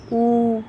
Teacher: तो आवाज़ कहाँ से आ रही है? पीछे से आ रही है, तो क्या हो जाता है? पश्च स्वर हो जाता है